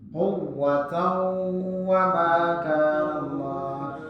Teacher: tanwin atau non sukun bertemu dengan waw. Ada tanda syaddu ataupun tidak, tetap dibaca dengung. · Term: Idgham bi gunnah